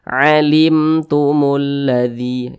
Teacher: Tapi selebihnya jika berjumpa dengan huruf mim sukun di depannya bukan huruf ba, di depannya bukan huruf mim, maka hukumnya adalah izhar syafawi, maka dibaca jelas tidak berdengung. Ini ada huruf mim sukun, di depannya berjumpa dengan huruf ta.